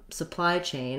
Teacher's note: I want my main stress on supply and then a little secondary stress on chain. So it's a compound noun, and in compound nouns, whether they're one word or two words, we stress the first word of the two more.